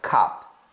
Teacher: E a gente tem o som curto, que no caso do O é um som de A. É um O bem aberto, é um A, quase um A.